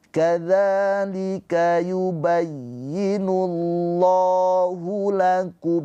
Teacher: Lafaz Allah dibaca dengan tafkhim tebal. Karena sebelum lafaz Allah ini harakatnya dommah. Maka yubayyinullah bukan yubayyinullah.